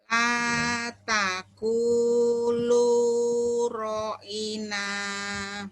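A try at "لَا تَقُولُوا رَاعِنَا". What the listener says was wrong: bukan la Bu, la. Bukan a. Ini lam alif ya, lam dulu yang dibaca. Jangan alif dulu.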